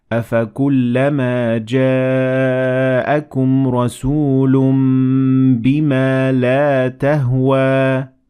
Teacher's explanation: we turned the noon at the end of رَسُولٌ into a meme